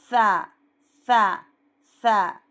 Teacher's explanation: एक चावल के दाना जितनी ज़बान ऊपर के दांतों के थोड़ा सा बाहर निकालना। ऐसा जब हम ऊपर के दांतों को टच करेंगे, एक चावल के दाने जितनी ज़बान, तो दांतों के सांध में से हवा पास होगी, तब इसका सही आवाज़ निकलेगी। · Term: हुर्फ़ लसविया